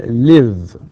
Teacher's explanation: final sound is voiced، بمعنى إنه في الحبال الصوتية فيه اهتزاز، مثل كلمة مثلا live.